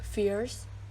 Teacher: diphthongs glide towards the schwa vowel for example the word fierce the starting point is a little closer than e in bit or pin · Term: centering the diphthongs